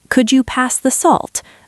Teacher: with a falling intonation sounds like a command